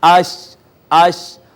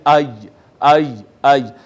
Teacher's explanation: زبان اوپر تالو کی جانب اٹھتی ہے تو وہاں سے جیم شین اور یا ادا ہوتے ہیں